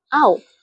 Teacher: Kategorinya ialah diftong kerana perkataan engkau pada suku kata kau mempunyai diftong vokal AU